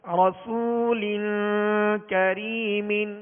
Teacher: لام کے نیچے 2 زیر کی تنوین ہے, آگے کاف حروف اخفا میں سے ہے لہذا غنہ کر کے پڑھیں گے. رسول کریم, اور کاف کو باریک پڑھیں گے